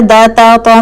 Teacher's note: آپ کی زبان کی جو نوک ہے وہ آپ کے سامنے والے 2 دانت کے ایج کے پیچھے لگ رہی ہے، جہاں سے دانت نکل رہا ہے وہاں پہ لگ رہی ہے، ٹھیک ہے۔